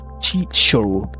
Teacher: Also, American accent tend to pronounce the letter R clearly.